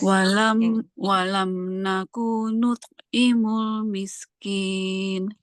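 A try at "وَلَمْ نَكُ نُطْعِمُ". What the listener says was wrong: walam nakunut. Cepat-cepat jangan walam nakunut. Itu dia udah ada alif. Udah kayak ada apa namanya huruf mad di situ.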